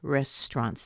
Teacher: You can kind of hear the S and the T pushing together